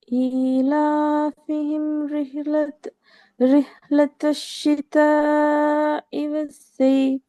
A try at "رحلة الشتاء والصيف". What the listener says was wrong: நீட்டி ராகம் எடுக்கணும். அதில் நீட்டணும்.